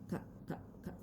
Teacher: suaranya ada di Pangkal lidah di Pangkal lidah